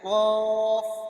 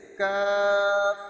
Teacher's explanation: بڑا قاف جو ہے آخری حلق سے نکلتا ہے جیسے کہ قاف، اور دوسرا کاف یہ شروع حلق سے نکلتا ہے